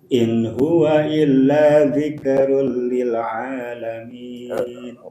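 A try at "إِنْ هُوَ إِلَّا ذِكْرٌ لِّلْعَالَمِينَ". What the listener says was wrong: Kafnya jangan dikolkolahkan. Zikrun, jangan zikrun.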